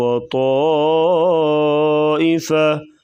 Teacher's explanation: مد متصل، 4 سے 5 الف کے برابر جو ہے اس مد کو لمبا کریں گے۔ وَطَائِفَةٌ، تم یہاں پر بھی غنہ کر کے پڑھیں گے۔